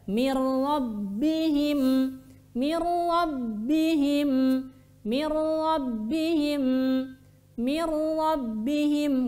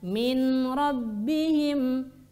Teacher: maka dibacanya Bila Ghunnah tanpa didengungkan